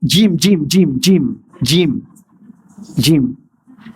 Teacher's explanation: Huruf pertengahan daun lidah menekan ke langit-langit keras.